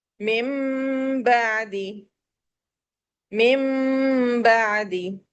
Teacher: میم کا تو یہ پورا مخرج ہے نا، جو باہر کے پورے ہونٹ ہیں یہ پورا مخرج ہے، لیکن یہاں ہم پورے ہونٹوں کو نہیں بلکہ ہونٹوں کا تھوڑا سا حصہ اندر کر کے ہم اسے میم کو بند کریں گے، اور ہونٹوں میں ایک وائبریشن سی فیل ہوتی ہے